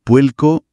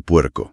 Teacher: En Puerto Rico, por ejemplo, es muy común que la R al final de sílaba suene como una L. Dicen puelco en vez de puerco.